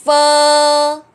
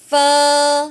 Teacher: Chữ này thì không đọc bằng môi, chữ này sẽ cái răng thỏ chúng ta đè lên cái môi dưới, y chang ta đang phát phờ phở, phờ phát vậy đó.